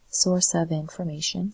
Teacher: the F sounds like V. So V and F and I connect.